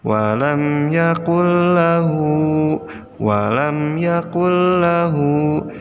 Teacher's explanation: Lihat, ada nun sukun menghadapi lam. Nah, jadi cara membacanya adalah nunnya dimasukkan ke dalam huruf berikutnya, yaitu lam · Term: idgham bila gunnah